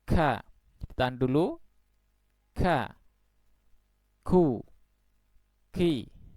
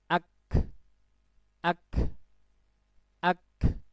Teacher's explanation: Yang jelas itu dialiri dengan udara, ya. Jadi suara yang keluar itu ada aliran udaranya yang mengiringi. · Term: hamas